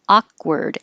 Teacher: the stressed vowel is ah, and the second A and looks like it should be ward, but it's not, it's word